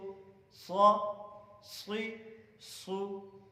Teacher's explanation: کیونکہ موٹے حروف میں سے ہیں، حروف مستعلیہ اس کو کہتے ہیں. تو یہ بعض حروف جو میں موٹے پڑھ رہا ہوں یہ حروف مستعلیہ میں سے ہیں